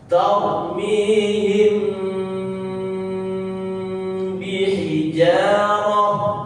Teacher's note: Ini bersama bertemu di juz berapapun, halaman berapapun, ayat berapapun, surat apapun, maka ketika bertemu mim dan mim mim sukun bertemu huruf ba, maka dibaca ditahan